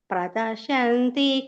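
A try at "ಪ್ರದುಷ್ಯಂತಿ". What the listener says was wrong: ಪ್ರದು ದು ಇದೆಯಲ್ಲ ಮಾತಾಜಿ ಪ್ರದಶಂತಿ ಅಂತ ಹೇಳಿದ್ರಿ ದು ದ ನೋಡಿ ವ್ಯತ್ಯಾಸ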